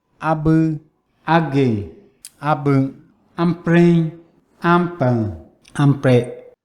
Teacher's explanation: There's a high level pitch, modal voice quality, and the voice quality is glottalized when the following syllable begins with a glottal stop. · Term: tone 1